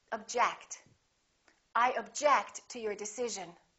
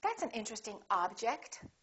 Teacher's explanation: If it's a verb, we get the second syllable. If it's a noun, we get the first syllable.